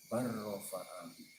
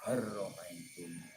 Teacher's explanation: Jadi lamnya diidghamkan ke huruf ro. Jadi sebagaimana yang sudah kita pahami di depan, idgham adalah memasukkan huruf pertama ke huruf yang kedua. · Jadi kalau dalam Al-Quran ada bacaan bal rafa'ahu, cara bacanya adalah bar rafa, diidghamkan. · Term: idgham jinsi